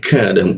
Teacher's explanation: huruf ka di siku tenggorokan dia, lidahnya kita turunkan. Ka, ada hembusan udara.